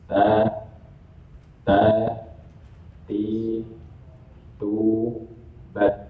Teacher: Huruf ta keluar dari ujung lidah, nempel dengan pangkal gigi seri atas. Ujung lidah menempel atau bertemu dengan pangkal gigi seri atas atau tempat tumbuhnya gigi seri atas, atau hampir mendekati perbatasan antara gigi dengan gusi.